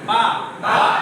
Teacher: দু ঠোঁটের মাঝখান থেকে